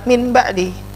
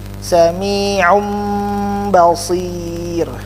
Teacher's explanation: Jadi mim, nunnya diganti menjadi huruf mim. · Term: iklab